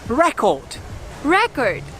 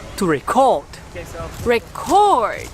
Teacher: when the word is a noun, the stress is on the first syllable. Record. Record. And when it is a verb, the stress is placed on the second syllable